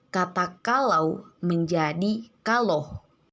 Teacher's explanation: Monoftonisasi terjadi pada bunyi vokal rangkap au atau au menjadi bunyi vokal tunggal o.